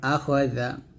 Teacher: এই জাল উচ্চারণটা জিহ্বার আগা উপর দাঁতের আগার সঙ্গে লাগাবেন